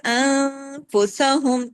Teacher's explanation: نون ساکن کے بعد فاتا اخفا ہوا، اخفا کے ساتھ غنہ کاملہ ہوا